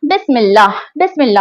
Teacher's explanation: हमजा ने बा को सीन से मिलाया और दरमियान से खुद हट गया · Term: हमजातुल वस्ल